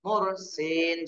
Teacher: র সাকিন ডানে পেশ র মোটা করে করতে হবে